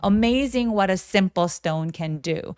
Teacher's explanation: T가 모음 사이에 또 끼어 있기 때문에 굴려주셔서 Amazing what a simple stone can do 라고 쭉 한 호흡으로 이어주시면서도 Amazing what a simple stone can do 계단식으로 톤이 조금씩 내려오시면 훨씬 더 자연스럽게 얘기하실 수 있습니다.